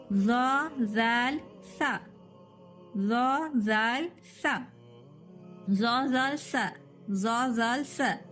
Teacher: زبان کی نوک اور اوپر کے درمیانی دانتوں کے کناروں سے 3 حروف سا زال ز